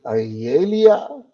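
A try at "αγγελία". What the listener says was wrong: The emphasis is on the e at the end. So you said agelia. It should be whatever it is here. Then you say lia, because the emphasis is on the iota here.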